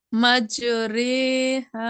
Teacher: یعنی کہ جھکا کر پڑھتے، مائل کر کے پڑھتے الف کو یا کی طرف اور زبر کو زیر کی طرف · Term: امالہ